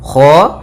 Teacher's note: Kha usahakan dia dari tenggorokan atas mendekati pangkal lidah kita